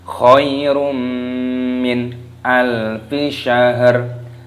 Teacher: Khairum, ya sukun dibaca khairum, dhammah tanwin bertemu dengan mim, hukumnya dibaca idgham bi gunnah, dimasukkan dan disertai berdengung.